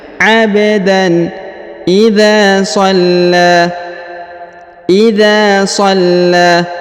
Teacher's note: Jadi huruf tanwinnya itu dibaca jelas ya, atau izhar. Abdan ya, dibaca jelas tanpa ada pengaruh apapun ya, tidak didengungkan dan juga ditekan ya, karena cuma berharokat tanwin ya.